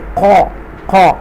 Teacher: قاف جو ہے حروف بولڈ لیٹر میں سے ہے، حروف مستعالیہ میں سے، تو یہاں پر اس کو بولڈ پڑھیں گے